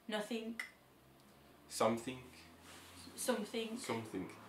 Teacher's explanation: adding K sounds to the ends of words that end in g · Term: intrusive k sound